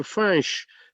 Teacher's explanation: Alors, c'est écrit F-A-I-N-C-H, tout simplement, parce que ce n'est pas prononcé Fanch, comme on entend souvent. Fanch est une francisation de Finch, c'est-à-dire c'est nasalisé, c'est par le nez.